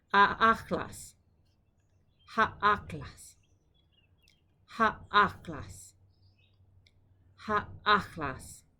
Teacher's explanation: You can do this as a palatal fricative, or you can do it as like a k.